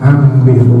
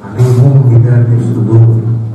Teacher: Contohnya ambihu, tulisannya ambihu tapi dibacanya ambihu karena ditukarkannya nun mati kepada mim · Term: iqlab